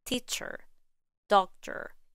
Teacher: In these words, ER and OR are simply reduced to the schwa sound in British English.